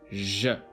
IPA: ʒ